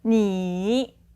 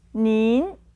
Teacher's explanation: 您， So if you compare this with the normal version of you, which would be, 你， you have one third tone, you normal, 你， and a second tone for the more polite version and together with an N sound in the end.